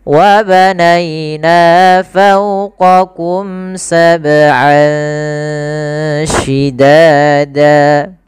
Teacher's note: Ini ada bacaan ikhfa, yaitu kita samarkan suara an ya ke huruf shin. Jadi terdengar seolah-olah dia ada eng gitu ya, tapi bukan ang, tapi dia ikhfa. · kita samarkan suara an ya ke huruf syin